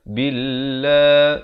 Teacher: lafz jalalah dibaca nipis 2 harakat